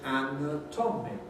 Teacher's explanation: So, stress on nat, we get anatomy, anatomy, anatomy. Stress on tom, and rhythmically therefore also on the an, we get anatomical.